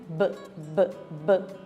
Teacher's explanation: Ela é uma letra bilabial. O ponto de articulação dessas letras está nos lábios.